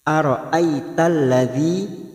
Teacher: Ara'aital ladzi, yang pertama ada harokat fathah yang bertemu ya sukun, namanya huruf layin, yaitu melunakkan harokat fathah yang bertemu ya sukun ini kita lunakkan ai. Aital ladzi masuk pada alif lam samsiyah.